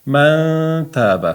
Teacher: Ya'ni nunni t ni mahrajiga yashirib o'qiymiz. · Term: ixfo